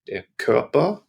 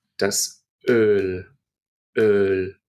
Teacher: Notice that it's longer than the Ö in Körper. In Körper, it's just a split second when I say that O, but when I say Öl, it's got 2 beats, right, instead of 1.